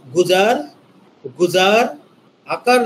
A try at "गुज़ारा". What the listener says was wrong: রায়ের পর আলিফ আছে না